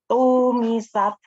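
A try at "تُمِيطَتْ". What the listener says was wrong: Tu-nya pendek, Mbak. Tumisat.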